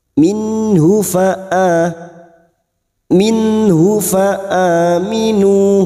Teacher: Nun sukun bertemu ha idhar halqi nun sukun dibaca jelas tanpa mendengung.